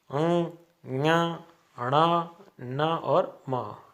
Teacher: ये 5 वर्ण है वो नाक से बोले जाते हैं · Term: नासिकीय व्यंजन